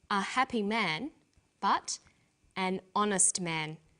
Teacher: the H is not pronounced so honest sounds like it starts with a vowel